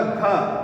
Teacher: घ में भी हवा आपको दिखाई देगी ज्यादा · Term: महाप्राण